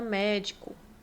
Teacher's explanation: A antepenúltima é a sílaba mais forte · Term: proparoxítonas